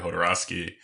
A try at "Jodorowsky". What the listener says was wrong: Jodorowsky? It's definitely not a hard J.